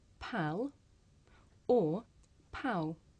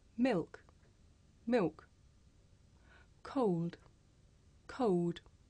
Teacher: Now this can actually make the l sound disappear at the end of a syllable.